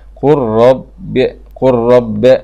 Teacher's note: ومن المتجانسين مثل قرب قرب، إضغام اللام في الراء إضغام كامل من غير غنة